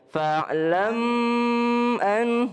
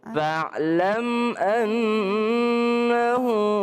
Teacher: Mim sukun ketemu dengan a tidak berdengung.